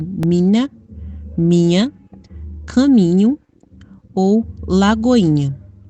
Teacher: há uma predominância quase que absoluta do apagamento do nhê, antecedido da vogal fechada i, restando, contudo, a nasalização